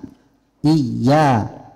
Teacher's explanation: عندنا الياء تخرج من وسط اللسان. إيا تخرج من وسط اللسان، يخرج 3 أحرف الشين والياء والجيم.